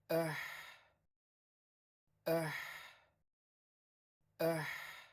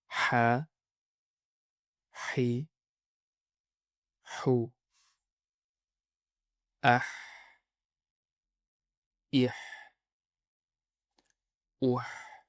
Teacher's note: Ха – это мягкий, чистый выдох. Представь, что ты дышишь на холодное стекло, чтобы оно запотело, или только что сел очень острый перец. · Представь, что ты дышишь на холодное стекло, чтобы оно запотело, или только что сел очень острый перец. Звук рождается в середине горла, он должен быть сухим, чистым и шипящим. Обязательно без хрипа. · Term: Буква ха